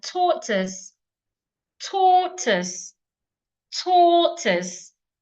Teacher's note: So tortoise also has two syllables and it's a noun. So I'm stressing the first syllable.